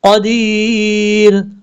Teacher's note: شیء قدیر، قاف حروف مصالحہ میں سے پر پڑھا جائے گا، دال کے بعد یا مدہ ہے، ایک الف کی مقدار لمبا کریں گے ، جب وقف کریں گے تو راہ ساکن ہو جائے گا،